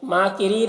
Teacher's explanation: را کے نیچے زیر ہے، را کو باریک پڑھیں گے اور یہاں پر وقف کریں گے تو مد عارض وقفی ہوگا.